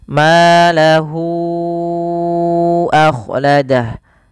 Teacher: cara membacanya Hunya dipanjangkan dulu empat harakat baru dilepas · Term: Mad Silah thawilah